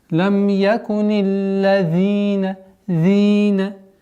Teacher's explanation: Удваиваем, уходим на два счета, долгота у нас здесь.